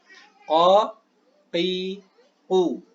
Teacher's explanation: Huruf qa. Yang mana huruf qa makhrajnya adalah ketika aqsal lisan, yaitu pangkal lidah, bertemu dengan al-hanak al-lahmi. Tentunya hanak di sini hanakul a'la, yaitu rahang atas yang lembek, yaitu yang di bagian belakang ini. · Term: makhraj al-qaf